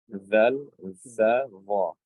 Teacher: the tip of the tongue with the tip of the upper incisors. The tips of the upper incisors.